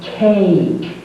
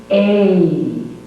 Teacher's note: The vowel A, the jaw is open for A, and then it closes for E. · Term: long sound